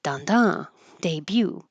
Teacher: We don't say the t and the stress is on the second syllable.